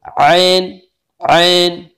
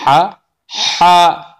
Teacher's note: दरमियानी हल्क से ऐन और हा अदा होता है